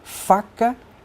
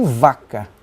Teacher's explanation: A diferença se dá entre os 2 sons iniciais dessas palavras, f de faca e v de vaca. No caso da pronúncia de f, não há vibração das pregas vocais, enquanto que na pronúncia do v, as pregas vocais vibram.